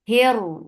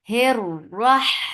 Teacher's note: ra will be heavy because it has fatha.